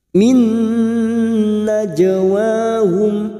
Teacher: masuk ke huruf nun dan mendengung selama 2 atau 3 harakat